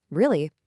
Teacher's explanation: But if I use a falling tone and just say, Really. I'm stating a fact or maybe even being a little bit abrupt.